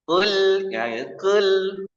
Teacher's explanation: mencampur sedikit suara dhamma dengan sedikit suara kasro. Kul, ya, kul, gitu, nggak sempurna.